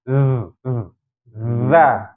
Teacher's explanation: Tetap ada udara yang keluar, ya. Zal itu perlu dipahami, udaranya tetap keluar tapi dia tertahan. Ya tidak deras bagaimana huruf hams gitu, ya. Tapi dia biasanya getaran pita suaranya itu terasa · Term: jahar